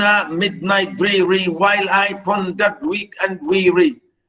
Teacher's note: This is really unbelievably strong trochaic meter. Stress, unstress, stress, unstress.